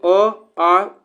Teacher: कंठ से कौन-कौन उच्चारण होता है इसमें से अ आ उच्चारण होता है